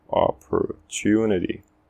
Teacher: O to é a sílaba enfatizada e ela termina com vogal, com o U, então é o som longo.